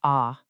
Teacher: A deep aleph is produced further back in your throat, giving you that ah sound.